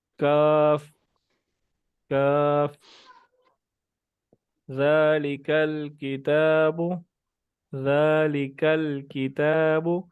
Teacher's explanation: کاف باریک ہے، قاف موٹا ہے